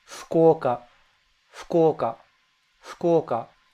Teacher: In English, you would say Fukuoka. But in Japanese, it's that F is softer. It's almost like you're sighing